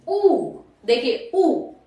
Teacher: होठ आपके कैसे हो रहे? गोल, गोलाकार हो रहे ना। ऊ, तो वृत्तमुखी में आएगा ऊ।